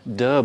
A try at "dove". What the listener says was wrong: No, dub, dove. No, it's oh. Dove.